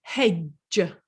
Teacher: you don't actually hear that duh and you've also got that soft g that j on the end